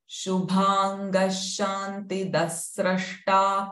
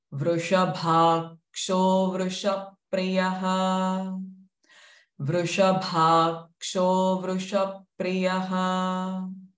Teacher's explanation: Both the sh sounds are retroflex. So the Shubhanga, Shantida is the hissing sh, while this Vrushabho is the retroflex sh.